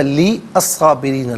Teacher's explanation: وہ اپلائی ہوگا، خیرن لی نہیں، خیرن لی۔ اچھا، لی الصابرین، لام کے نیچے زیر سے صابرین کے صاد کے ساتھ ملائیں گے، درمیان میں سے الف حمزہ کو حذف کریں گے